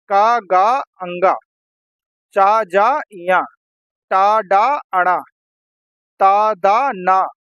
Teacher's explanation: हर वर्ग का पहला तीसरा और पांचवा व्यंजन अल्प प्राण होता है